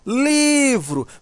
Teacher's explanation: Se você chamar a palavra livro, olha como vai ficar, ó, livro. Veja que o li, né, demora mais. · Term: sílaba tônica